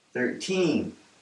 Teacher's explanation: we're going to break this down into two syllables and we're going to put the stress on the second syllable